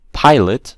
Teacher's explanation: Pilot, stress is on the first part.